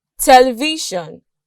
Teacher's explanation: the last syllable is made up of a consonant sound a vowel sound which is silent and a consonant sound but in this case the consonant sound is now a syllabic consonant